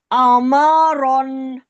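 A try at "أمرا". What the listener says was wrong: ہمارا رن کیوں؟ را کے اوپر تو زبر ہے، ہمارا وقف کریں، ہمار، ٹھیک ہے آگے چلیں۔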